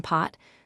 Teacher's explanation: English speakers actually already aspirate the k in kite and the p in pot.